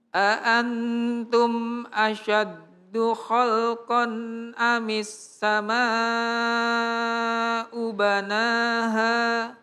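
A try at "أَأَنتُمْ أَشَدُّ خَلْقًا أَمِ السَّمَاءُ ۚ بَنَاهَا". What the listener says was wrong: Masya Allah, Bapak ini bacaannya bagus, Masya Allah.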